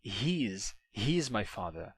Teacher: E aí o is perde a vogal. Em vez de he is, você tem his.